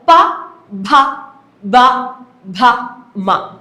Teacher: ആ മേൽചുണ്ടും എനിക്ക് ആവശ്യമായിട്ട് വന്നു കീഴ്ചുണ്ടും ആവശ്യമായിട്ട് വന്നു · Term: ഓഷ്ട്യം